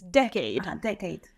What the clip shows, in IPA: Dɛcade